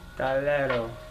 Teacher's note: the accent is no longer on the last syllable, but on the middle to last